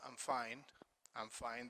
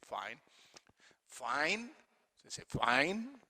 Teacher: voice falls this is called a falling tone on a statement sometimes the falling tone indicates satisfaction and appreciation